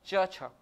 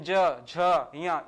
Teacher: शुरू के जो दो है उसमें वाइब्रेशन नहीं है। और बाकी पीछे के जो तीन है उसमें क्या है? वाइब्रेशन है या कंपन है।